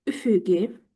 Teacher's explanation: İkinci Ü-nü üfüqi şəklində uzun tələffüz edirəm.